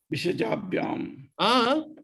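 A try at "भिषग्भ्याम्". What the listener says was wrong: Cha set turns into Ga set. That becomes Bishagbyam.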